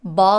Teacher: the word ball is stressed and it's pronounced with an ah sound that requires a bit of a stretch